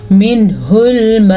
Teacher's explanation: نون ساکن کو ظاہر کر کے پڑھیں گے، نون ساکن کے بعد والا حرف حروف ہلکی میں سے ہے ، مد کا آپ نے دھیان رکھنا ہے، یہ والی مد · یہ والی مد تقریباً 4 سیکنڈ تک لمبی کی جانے والی مد ہے